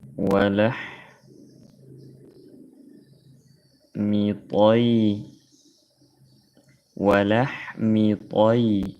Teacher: Ya sukun setelah fathah disebut ya lin, baca lembut.